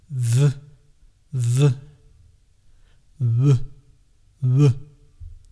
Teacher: The W and V are voiced consonants. The vocal cords do vibrate.